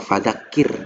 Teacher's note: ro sukun didahului kasroh. Contoh fadzakir. Nah, dia tipis, nggak boleh fadzakir, nggak.